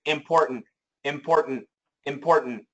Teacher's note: A lot of Americans will say important, important, important, and that's a stop T, import. And then right from that stop position, they do the N, import, and then they do another stop T, import, and that's what they say, important, important.